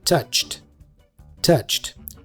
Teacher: touch in the past becomes touched you see we have a final T sound